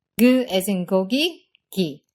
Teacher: Our second to last set of sounds are the K sounds of Korean. First, we have lax K.